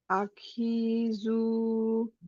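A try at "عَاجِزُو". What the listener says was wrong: জিম এটা। আজিজু, প্রথমটা জিম পরেরটা জা। আজিজু।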